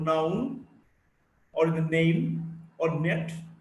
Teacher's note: N is a voiced alveolar nasal.